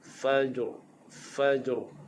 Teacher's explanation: Ra hukumnya takrir, dia bergetar.